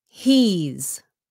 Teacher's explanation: He is becomes he's. Sounds like a Z. Say he's. Okay, quý vị, pronounce with the Z sound chứ đừng có làm cái sound S nhé.